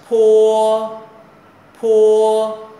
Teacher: lòng bàn tay đã cảm giác có một cái luồng hơi thì chữ này gọi là gọi là âm bật hơi